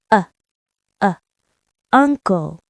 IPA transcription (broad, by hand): ʌ